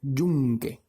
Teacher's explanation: la mayor fuerza de voz es en esa primera sílaba